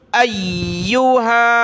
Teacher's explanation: یا کو سخت کیا، ہا کو کھینچیں گے، مد ہے